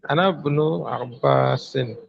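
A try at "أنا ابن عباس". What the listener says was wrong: আনাবনু, নুনটা বাকে ধরবে। হ্যাঁ, আনাবনু আব্বাসিন,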